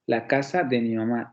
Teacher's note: nosotros sabemos que las palabras acentuadas en esa frase va a ser casa y mamá pero por ejemplo el artículo la es un elemento in acentuado